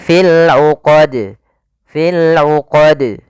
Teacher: harus dibaca dengan tidak ada tambahan Hamzah dan dia harus memantul jangan sampai berhenti tidak memantul misalnya fil uqad atau fil uqad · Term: Qalqalah